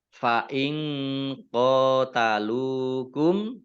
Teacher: Fa'ing qatalukum, nun sukun bertemu dengan huruf qaf, bacaan ikhfa, dibaca samar-samar.